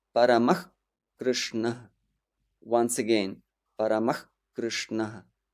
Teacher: Now, air blocker number 2 comes when the next word begins with K or K. Your Visarga in this case can optionally turn into the sound called Jihvamuliya, and it is pronounced as H.